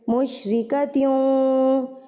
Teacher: ابھی تنوین کے بعد یہاں پر ہمارے پاس واؤ ہے، تو ہم غنہ کے ساتھ یہاں پر غنہ کے ساتھ ادغام کریں گے